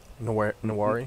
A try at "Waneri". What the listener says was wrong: Waneri. No, don't pronounce the N.